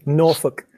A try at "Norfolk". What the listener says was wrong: Rather than the L, Norfolk.